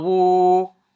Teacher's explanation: So next we have Waaw damma Waaw Sagheera Woo. So because of this Waaw Sagheera, we're going to extend this damma to equivalent to 2 movements.